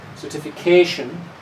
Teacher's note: So the main stress is certification. The first one is a secondary stress which is not quite as strong